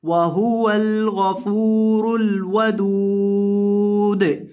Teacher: वक़फ़ की हालत में दाल को साकिन कर देना है